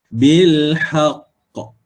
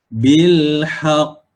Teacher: yang pertama sekali kita tekankan huruf qa. Kemudian suara kita tertahan sekejap, kemudian baru kita lantunkan dia. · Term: qalqalah kubra